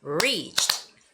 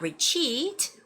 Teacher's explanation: So the first syllable, re, is the longer one